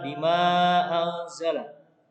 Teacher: Ada mad tabi'i bertemu dengan hamzah di lain kalimat, ini namanya mad jaiz munfasil